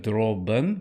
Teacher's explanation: droben with a schwa at the end. Droben, im, not im, but im, and then licht.